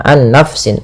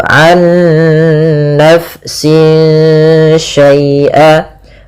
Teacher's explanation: Nah, ada bacaan idgham bi gunnah, yang dimana dia di sini kita harus membacanya, nunnya masukkan ke nun kedua dan disertai dengan gunnah. Nah, kesalahan yang terjadi tidak menahan gunnahnya, an nafsin langsung, tapi benar ditahan dulu, an nafsin syai'a.